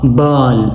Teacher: تھوڑا سا گول ہونٹ بنانا ہے اور آواز کو آپ نے کیا کرنا ہے کھینچنا ہے لمبا کرنا ہے. یہ لانگ وول ہے.